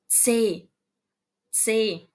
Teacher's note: ele não é só C, ele tem um Tzinho bem fraquinho